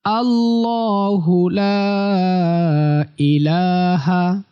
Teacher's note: লাতে তিন আলিফ টান হবে আল্লাহু ল মোটা আল্লাহু লা ইলাহা আল্লাহু লা ইলাহা এরপর ইল্লাহু